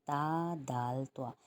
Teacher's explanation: راس اللسان سے مراد زبان کے کنارے کی چوڑائی ہے، یعنی زبان کی نوک کی چوڑائی اتنی باریک ہو کہ صرف اوپر کے 2 دانتوں کی جڑ سے لگے، یعنی کہ جو سامنے کے ہمارے 2 دانت ہیں، بالکل سامنے کے جو 2 چوڑے دانت ہیں، ان کی جڑ یعنی وہ حصہ جہاں پر دانت اور مسوڑا مل رہا ہے وہاں پر زبان کا کنارہ لگے گا تو 3 حرف ادا ہوں گے، تا دال طوا۔ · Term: حروف نطعیہ